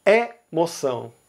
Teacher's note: Todos os outros falaram emoção, E, com E fechado. Mas Pernambuco e Ceará falam emoção, com o E aberto